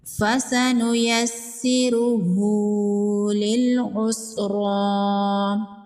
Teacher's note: سین پر تشدید ہے، اس کو 2 بار پڑھیں گے۔ را پر پیش ہے، را کو پر پڑھیں گے۔